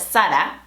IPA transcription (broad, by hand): ˈsa.ɾa